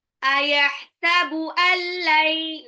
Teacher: nun sukun ketemu lam, langsung lebur ya, tapi nggak usah ditahan